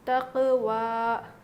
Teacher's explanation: تو دیکھیے قاف پر اگر جزم ہے تو اس کو بھی ہم جو ہے یہ حروف قلقلہ میں سے ہے، اس کو بھی اسی طرح سے پڑھیں گے، اور واو پر کھڑا زبر ہے، یا پر کچھ بھی نہیں ہے، صرف لکھا گیا ہے لیکن پڑھا نہیں جائے گا، تو واو پر کھڑا زبر ہے تو اس کو ہم کھینچ کر پڑھیں گے